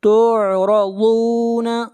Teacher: ضاد کو موٹا پڑھیں گے، ضاد حروف مستعلیہ میں سے ہے۔ لا تخفى، لا کو کھینچ کر پڑھیں گے ایک الف کے برابر، یہاں پر الف مدہ ہے۔